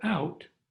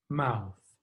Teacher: letter u as in gum or strut in the word out the letter o makes a diphthong the long ow sound